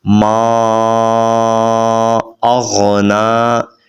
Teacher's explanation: میم کو تھوڑا سا لمبا کریں گے، اوپر مد کھڑی ہے۔ اغنا غین ہے۔